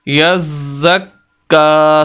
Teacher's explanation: یزک کا، کاف کے اوپر کھڑی زبر بھی اور چھوٹی مد بھی ہے، اس وجہ سے کاف کو لمبا بھی کریں گے